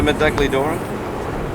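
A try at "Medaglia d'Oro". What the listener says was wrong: You don't pronounce the G. Medali or...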